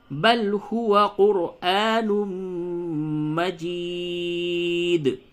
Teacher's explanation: را کو پر کریں گے کیونکہ را ساکن سے پہلے والے حرف پہ پیش ہے، تو قرآن اور میم پہ تشدید ہے تو میم پہ غنہ کریں.